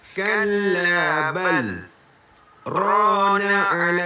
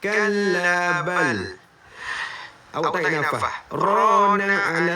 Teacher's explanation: Saya berhenti seketika tapi saya tak tarik nafas kalau baca macam ni. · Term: saktah